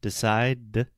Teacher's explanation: if you say the sound, decide, the last sound is a D. We don't pronounce the E at the end.